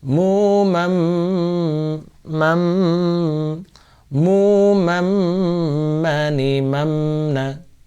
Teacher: Mim ini termasuk idgham bil gunnah, maka harus dibaca gunnah, mengandalkan hidung juga ya, menggunakan suara dari hidung